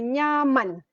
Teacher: Sebab ada proses nasalisasi yang vokal tadi dapat tempias bunyi daripada bunyi nasal sebelumnya.